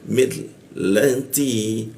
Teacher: Mil masuk ke lam, di bawah hidung posisinya mil, lanti, huruf T ya. Ujung lidah bertemu gigi dia T, seperti itu. Ada bocor tipis.